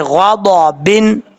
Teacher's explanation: غین کو بھی پر پڑھیں گے، ضاد کو بھی پر پڑھیں گے، کیونکہ یہ حروف مستعلیہ میں سے ہے